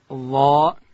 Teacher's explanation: ظا ادا کیږي د ژبې سر چې کله د لوړې زامې د مخ دوه غاښو د سرو سره یو ځای کو دلته حرف ظا ادا کیږي · د ظا او د دال دا فرق سته چې د دال اواز چې دی باریک دی او د ظا اواز ډک دی